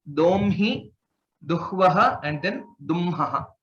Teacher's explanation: Whenever it is a combination, whenever there is a sanyuktaksharam between hakara and either na or ma with these three letters, then the anunasika is pronounced first and then the hakara